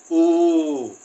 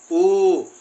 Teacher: हमारे होठ भी जैसे दोस्तों ऐसे हो जाते हैं ऊ, जैसे एक चोट सी बन जाती हो, हमारे होठ ऐसे हो जाएंगे और इसको बोलेंगे ऊ। इसमें ऊ की ध्वनि लास्ट में थोड़ी सी लंबी खींचेगी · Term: बड़ा ऊ